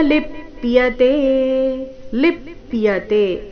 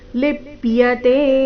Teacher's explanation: ಲಿಪ್ಯತೆ ಲಿ ಮೇಲೆ ಆಘಾತ